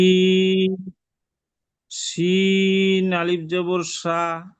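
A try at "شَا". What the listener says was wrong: সা বলে টান দিবেন তো, টানটা তো এখানে হবে। হ্যাঁ, আরো টান হবে।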